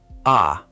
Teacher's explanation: The letter A is said ah, not A like in English, but a clean, open ah